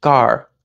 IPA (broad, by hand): k ɑɹsən